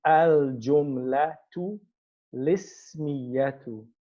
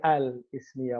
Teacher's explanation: because this hamzatul wasl has a kasra, the lam with the sukoon steals the kasra. And then the lam is pronounced with sukoon.